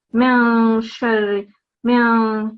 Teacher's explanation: So here what you have to do is the nasal sound. So you don't pronounce the noon sound, but you have a 2-second nasal sound here. So it's not the noon sound.